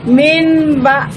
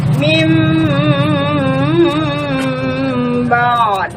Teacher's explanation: apabila nun mati bertemu dengan huruf ba, maka suara nun matinya dipalingkan bunyinya menjadi suara mim. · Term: iklabe